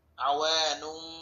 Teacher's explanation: মিম দ্বারা পরিবর্তন করতে হবে। এখানে ছোট একটা মিম দেওয়া আছে, মিম দ্বারা পরিবর্তন করে গুন্নার সাথে করতে হবে, এই গুন্নাটির নাম হচ্ছে ইকলাব গুন্না